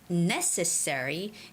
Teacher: the stress goes on NE necessary